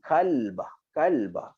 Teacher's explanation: Tapi kalau kita nipiskan qaf ni, dia jadi kalbah, kalbah.